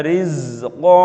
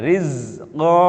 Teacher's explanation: Huruf qaf di fathatain, lalu kemudian cara membacanya kalau kemudian kita berhentikan maka dia menjadi huruf alif atau dipanjangkan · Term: mad iwad